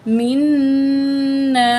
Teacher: نون تشدید والا ہے، غنہ کریں گے